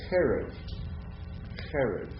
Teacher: Segolic nouns, where the accent occurs on the first syllable, right? So this is, and the chet is pronounced a little bit gutturally, cherev.